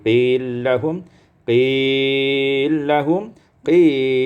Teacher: qila lahum idghamul lam fil lam, diidghamkan lam pada lam menjadi qillahum qillahum qillahum, dibaca dengan qasar, tawassut dan isba'.